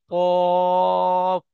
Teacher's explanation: উচ্চারণ করবার সময় ঠোঁট দুটি গোল আকৃতি হবে